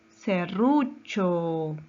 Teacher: su mayor fuerza de voz está en la penúltima sílaba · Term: palabra grave